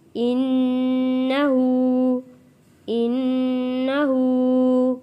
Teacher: نون تشدید پہ غنہ ادا کرنا ہے اور الٹے پیش کو ایک الف کے برابر کھینچ کر پڑھنا ہے۔